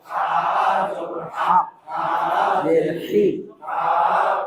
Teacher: বড় হায়ের উচ্চারণে গলায় শুশু শব্দ হবে